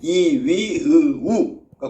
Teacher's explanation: 입이 제일 작게 벌어지는 건 혀의 높이가 높은 고모음